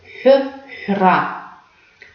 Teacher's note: Как мы произносим звук «х»? Как «х», но с округлением губ. · Такой открытый звук «х». Немножко округляем губы.